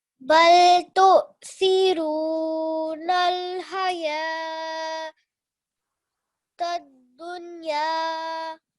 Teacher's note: You don't combine them. It's hayya, and you prolong for 2 seconds on ya.